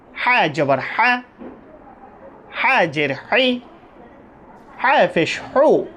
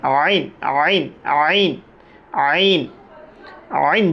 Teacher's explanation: হা এবং আইন দোনোটার মাখরাজ একটা দুনোটা একই স্থান থেকে উচ্চারিত হবে আইন হাওভাবে উচ্চারণ হবে একটু চিপে বলতে হবে হলকের মাঝখান থেকে